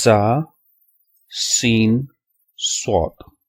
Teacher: تو یہ 3 حروف ایسے ہیں جب آپ ان کو ادا کرتے ہیں تو آخر میں جو آپ کی آواز ہوتی ہے وہ سیٹی کی سی آواز آتی ہے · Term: صفیریہ حروف